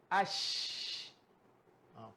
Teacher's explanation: Shin ni huruf yang apabila kita sebut huruf shin maka bersemburan angin